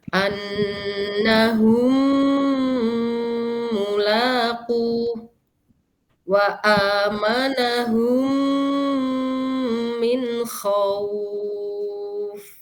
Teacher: Mim yang pertama sukun, mim yang kedua berharokat. Dibacanya gunnah, ditahan 3 harokat. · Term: idgham mimi